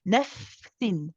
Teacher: When we say nafsin, the fa is rakhawa. We let it run.